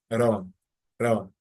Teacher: it's like a quick tap at the top of your mouth to pronounce that R sound, run, run. And then in order to roll the R, you maintain your tongue in that position, and then you blow air.